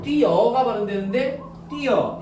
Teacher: 모음으로 끝나는 용언의 어간 뒤에 어나 오로 시작하는 어미가 붙을 때 보여? 붙을 때 자연스럽게 반모음 이 소리가 덧나서 이중모음으로 발음된다는 거예요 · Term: 반모음 첨가